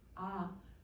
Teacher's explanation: 아 같은 경우는 혀가 아래로 이렇게 내려갔으니 저모음